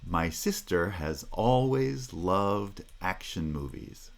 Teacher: natural rhythm for that has stress in certain places and then the pitch of the voice rises on those primary stresses and then falls until we come to the next primary stress syllable